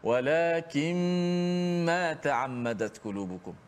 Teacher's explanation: Walakin asalnya nun mati. Walakin jumpa dengan mim, nun tu masuk dalam mim. Walakin tutup mulut terus, senang. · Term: gunnah